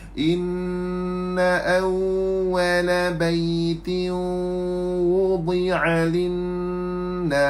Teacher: hukum dia adalah idgham ma'al gunnah, masuk pada waw